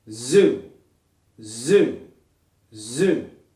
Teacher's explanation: Hand on throat. Think about vibrating those vocal cords.